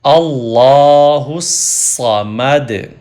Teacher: تو صاد سے پہلے وہ والا پہلا لیٹر ہا ہے تو ہا ول کنیکٹ ٹو صاد، ہا پیش صاد حس، اللہ حس، صاد زبر سا، اللہ الصا، میم زبر ما، اللہ الصامہ، دال پیش دو، اللہ الصمد، ہم یہاں سٹاپ کریں گے تو پیش کو نہیں پڑھیں گے، سٹاپ جب کرتے ہیں دال کے اوپر جزم کے ساتھ پڑھیں گے دال کو، پیش ختم ہو جائے گی۔ اللہ الصمد، دال پہ کلکلا یا ایکو ساؤنڈ پروڈیوس کریں گے، اللہ الصمد۔